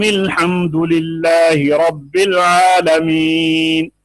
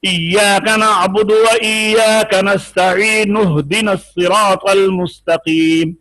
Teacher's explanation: جب پیچھے سے ملا کر پڑھتے ہیں، وصل کرتے ہیں تو وہ حمزہ حذف ہو جاتا ہے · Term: حمزہ وصلیہ